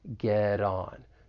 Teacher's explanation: That final T in get, I'm going to pronounce this as a flap T, and then we can link that flap T with the vowel sound in on.